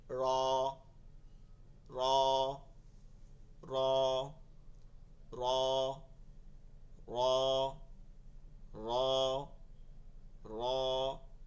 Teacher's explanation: মানে হচ্ছে র এর মধ্যে কোন ভাইব্রেশন আসবে না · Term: রেফ র